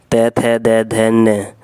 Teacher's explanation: दोस्तों इनका उच्चारण स्थान होता है दांत